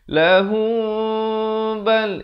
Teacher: Ikhfa syafawi kena baca dengan kadar bibir hampir bersentuhan saja 2 harakat.